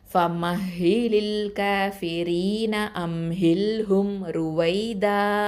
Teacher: மத்துல் ஐவப் அப்படிங்கிற அந்த சட்டத்தின் அடிப்படையில் 2 அலிஃப் நீட்டி நிப்பாட்டணும்